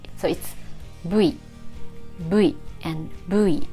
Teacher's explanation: So there's no V sound. Japanese doesn't have V sound. So instead of V, we use B.